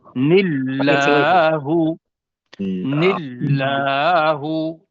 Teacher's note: نون کے نیچے زیر ہے اور اس کے آگے اللہ ہے، اس کو پتلا کر کے پڑھیں گے